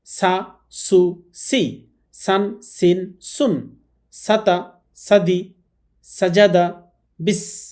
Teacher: সামনের নিচের দাঁতের আগা থেকে শীষ দিয়ে উচ্চারণ করতে হয় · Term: সিন